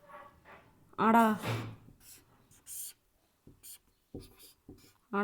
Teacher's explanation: ण का नासिका प्लस मूर्धा